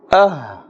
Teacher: The makhraj, which means the place where the sound emanates or comes from, is from the bottom of the throat. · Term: ha